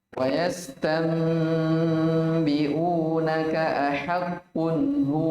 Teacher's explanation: ahaqqun izhar halqi. Nun sukun atau tanwin bertemu dengan salah satu dari 6 huruf tenggorokan.